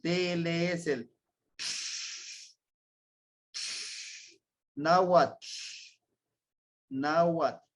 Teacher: mucho el TL su sonido se hace es pegando la lengua nuestra lengua al paladar hacia arriba y sacando el aire aquí a los lados